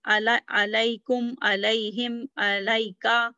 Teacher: Ala and ila, when they are pronounced when they are attached to a pronoun, alaikum, alaihim, alaika. So when they are attached to a pronoun, then they are pronounced with ya